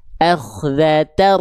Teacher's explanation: Akhdatar, berarti udah nggak ada an-nya, udah nggak ada. Jadi ketika kita baca, bukan kita baca akhdatan ro, enggak, tapi akhdatar. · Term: idgham bila guna